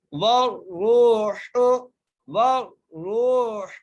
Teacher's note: بغیر کھینچے پڑھنا ہے، ملائکۃ، واو کو را سے ملانا ہے، را کو موٹا کر کے پڑھنا ہے، را کو ایک الف مقدار کھینچ کر بھی پڑھنا ہے